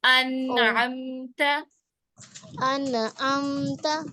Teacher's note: देखिए, इसमें हम अन अन अन आम का नून को बाउंस नहीं करेंगे, नून पे जज़म तो है लेकिन उसको हम बाउंस नहीं करेंगे, इसको हम होल्ड करेंगे